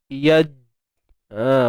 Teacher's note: Huruf jim tengah lidah naik ke langit. Dan ada sifat syiddahnya. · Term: qalqalah sughra